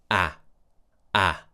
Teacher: The mouth is quite open because the tongue is all the way down at the bottom of the mouth. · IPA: /æ/